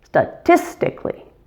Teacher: The tis gets primary stress, statistically. Note that the first syllable has a schwa sound,